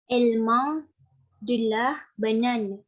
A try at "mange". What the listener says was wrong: Ya, tapi bukan mong. Kalau mong tulisannya M-A-N. Kalau dibacanya mong tulisannya M-A-N. Hanya N jadi sengau. Tapi belakang N ada huruf apa itu? Ada huruf apa setelah huruf N? G bahasa Perancisnya apa? Ya, J dan E kan J kan. Jadi setelah sengau keluarkan bunyi J-nya. Je mange, elle mange.